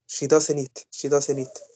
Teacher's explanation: I don't pronounce the t